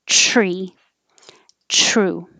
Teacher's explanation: You're in the T position here, and then you drag it, the same as DR, and you push with pressure, ch. And you should hear that TR sound like a ch noise.